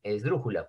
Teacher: Porque la tonicidad está en dru.